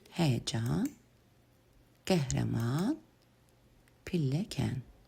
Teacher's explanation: A və ə saitləri hər ikisi dodaqlanmayan açıq saitlərdir.